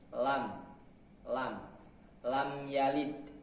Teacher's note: ujung lidah bertemu dengan langit-langit yang berhadapan dengannya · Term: huruf lam